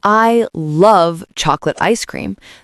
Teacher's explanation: the stress is on love. Because that's the main emotion. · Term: sentence stress